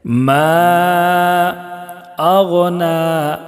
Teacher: نون کو 1 الف کے برابر کھینچ کر پڑھیں گے، اس لیے کہ کھڑا زبر ہے، اور کھڑا زبر برابر ہوتا ہے الف مدہ کے۔